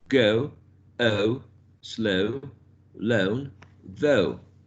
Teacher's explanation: In the production of this closing diphthong, we go from the center area to a higher position. If you see, it's not really far back, but also between the central section and the back of a mouth.